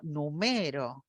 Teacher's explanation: cuando digo numero estoy aplicando mayor f0 y mayor volumen en la sílaba central